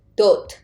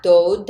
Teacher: when 디귿 acting as a final consonant, it will be T sound